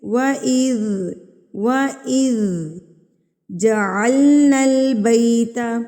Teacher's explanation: از جو ہے نا، زال کو ہلانا نہیں ہے، قلقلہ نہیں کرنا ہے اس کے اوپر، اس کو ہلانا نہیں ہے.